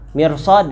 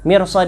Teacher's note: mirsad itu dia dibaca rnya itu secara tafkhim karena apa setelahnya ada Shad